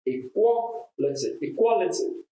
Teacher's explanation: The stress is on qua, the second syllable.